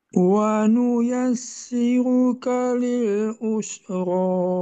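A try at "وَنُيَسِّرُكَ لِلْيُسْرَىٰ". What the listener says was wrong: Nah, hati-hati bukan usro tapi yusro. Ya, diulangi.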